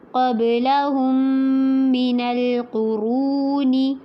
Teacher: لہم میں میم جو میم ساکن ہے اس کو میم مشدد کے ساتھ اگلے میم کے ساتھ ملاتے ہوئے پڑھنا ہے اور غنہ کرنا ہے. قبلہم من القرون، مینل میں نون کو نرمی سے پڑھنا ہے، قوف کو پر کرنا ہے، رو کو مد اصلی کرنی ہے یعنی کہ لمبا کرنا ہے اور پر بھی کرنا ہے.